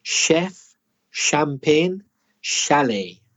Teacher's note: CH is sure it's not the same as cha like chat it's a different sound it's Shh like she or shall · Words like that are tricky for Spanish speakers because that CH is sh. It's not the same as ch, like chat. It's a different sound.